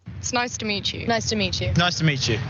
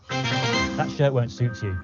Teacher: when one word ends in a t sound and the next begins with a sound like you or yours then the two sounds come together and change to ch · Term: assimilation